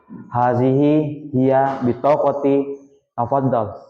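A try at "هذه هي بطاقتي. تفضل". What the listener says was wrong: Iya. Jayid Jidan, aplaus untuk temannya.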